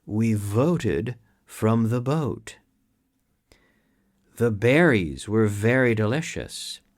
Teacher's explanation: Es una F vibrada. So you start with the F and you activate the vocal cords, okay? And you have a very good V.